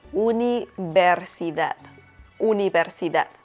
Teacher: the V sound in Spanish, it's pretty much non-existent. So you pronounce the letter V as B in Spanish. So instead of saying universidad, you will say universidad, universidad.